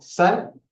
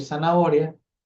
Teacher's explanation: nosotros para decir, no sé, sal, hacemos una fuerte aspiración, pero por ejemplo, para decir zanahoria, no es una pronunciación tan marcada